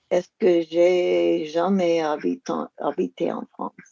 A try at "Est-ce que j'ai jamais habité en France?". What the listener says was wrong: Go again without a pause. Est-ce que j'ai... Est-ce que j'ai... Don't change the note.